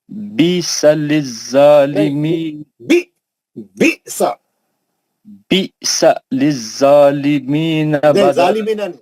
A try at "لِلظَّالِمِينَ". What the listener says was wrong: ظالمینہ نہیں، یہ مستعلیہ کا ہے. للظالمین.